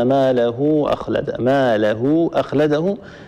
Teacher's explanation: هاء الكنايه بعدها همزه هذه صله كبرى وتمد كالمد المنفصل سواء بسواء يعني اذا كنا نمد المنفصله بمقدار حركتين نمد الصله الكبرى بمقدار